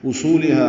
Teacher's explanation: علی اصولها، اب ہم اس مد کو چار حرکات لمبا کرتے ہیں. اصولها حمزہ اقصی حلق سے بالجہر ادا ہوگا. سو و مدہ ہے، صاد پر پڑھیں گے، و مدہ ہے، دو حرکات لمبا بھی کریں گے.